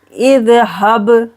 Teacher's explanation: बा पर करेंगे कलकला, दाल पर कलकला नहीं करना है